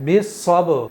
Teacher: तो दोनों होठों के गीले हिस्से के टच होने से बा अदा होता है। कलकला में जब इस बा को हम अदा करेंगे इसी मखरज से तो दोनों होठों को आपस में मिलाएंगे जरूर।